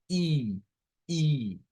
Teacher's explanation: este es un sonido close, es cerrado, que nuestra boca no se abre mucho.